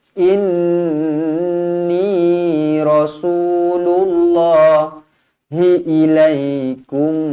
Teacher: nun yang bertanda sabdu wajibul gunnah, dengung dua harakat.